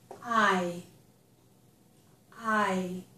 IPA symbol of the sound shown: aɪ